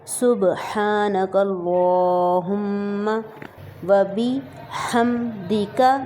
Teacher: میم پہ شد کی وجہ سے یہاں پر غنہ ہوگا،